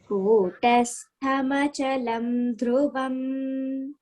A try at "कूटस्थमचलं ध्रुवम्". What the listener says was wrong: Dhruvam is Mahaprana. Kutastamachalam dhruvam. Actually, it is Kutastham Achalam Dhruvam. So don't break after Kutastha. Kutasthamachalam Dhruvam.